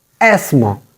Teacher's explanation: TH is silent here. The sound of th is silent here.